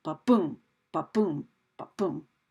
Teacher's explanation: where that first syllable is unstressed and the second syllable is stressed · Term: iamb